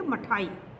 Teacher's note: स्वराघातहीन अक्षरों में ई का अ की तरह प्रयोग किया जाता है।